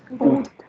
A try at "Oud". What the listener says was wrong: It's pronounced as ut. The t is sounded. पहले का आ नहीं बोल रहे हैं आप और ये ऊ का sound है.